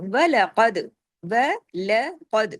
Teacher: اس میں کاف کو ہیوی کرنا ہے اور دال پہ کلکلا کرنا ہے · इसमें काफ को हैवी करना है और दाल पे कलकला करना है